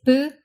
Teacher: it's unvoiced and it's slightly less aspirated than its english counterpart in ipa you'll see it marked as a lowercase p and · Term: lax p